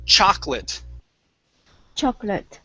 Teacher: So this second O we do not pronounce.